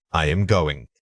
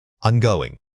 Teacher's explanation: In fast speech, the auxiliary verb am almost always reduces to a quick sound and merges with the following word. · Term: Contraction